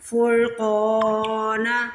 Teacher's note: را کو بھی موٹا پڑھنا ہے اور قاف کو بھی موٹا پڑھنا ہے